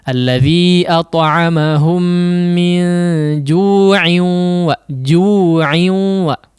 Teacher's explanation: ketika disambung ju'in ya, ju' cuman 2 harakat